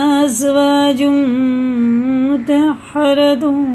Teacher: دیکھیے تنوین کے بعد میم آ رہا ہے تو یہ وہی ہے، یہ ادغامی میم ہے، غنہ کر کے پڑھیں گے